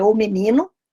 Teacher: a sílaba tônica é o ni